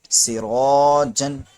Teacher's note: آگے دیکھیں، سین زیر سی، را الف زبر را، سیغا، جیم دو زبر جن، سراجن، یہاں پر را موٹا ہوگا کیونکہ را پر زبر آ گیا اس لیے، اور الف بھی موٹا ہو گیا کیونکہ اس سے پہلے را موٹا حرف ہے۔